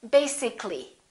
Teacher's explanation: if we add a l l y we don't say li this a disappears so the a is not pronounced and we say basically